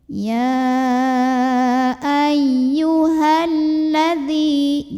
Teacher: Jadi kalau tidak berhenti mad tabi'i ini gugur, bacanya pendekin. Ya ayyuhalladzi, jangan dipanjangin dulu haknya kalau wasol.